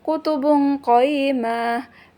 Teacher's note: Tanwin ba bertemu dengan ko, huruf ko, maka dia hukumnya ikhfa atau dibaca dengung seperti huruf ng. Contohnya kutubun qayyimah, dia hukumnya ikhfa.